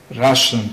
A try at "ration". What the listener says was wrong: No, that's Russian. Russian like rush. Okay, and ration like rat. Rush, rat.